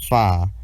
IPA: f